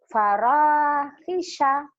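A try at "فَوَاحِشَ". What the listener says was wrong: Salah, bukan paro, Bu. Fawahisha.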